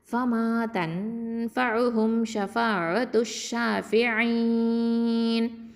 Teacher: இப்போ இங்கே என்ன பண்ணுவோம், வக்ஃபு பண்ணும்போது நூனை சுக்குனாக்கிடுவோம். அப்போது மத்தல் ஆரிதல் சுக்குன் சட்டம். அப்போ என்ன பண்ணணும், 4 இல்லைனா 6 ஹரக்கத்து வரைக்கும் நீட்டி ஓதலாம்.